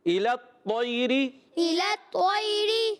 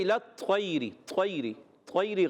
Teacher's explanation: طا کو موٹا رکھنا ہے